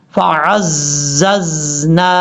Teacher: یہاں پر عین کے بعد جو زا ہے یہ سیٹی کے ساتھ پڑھا جائے گا